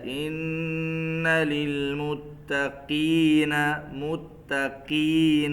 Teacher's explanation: جب قاف کے نیچے زیر آ جائے تو اس کو اتنا موٹا نہیں پڑھتے جب کہ اس کے اوپر زبر ہو جیسے پڑھتے ہیں